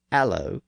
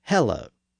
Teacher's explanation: it was common for speakers in England to drop the initial H in words that began with an H sound. So they said things like allo instead of hello.